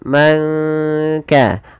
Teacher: samarkan suara nunnya kepada huruf Kaf